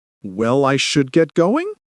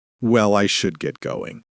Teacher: Now, try it with a falling tone, like a statement.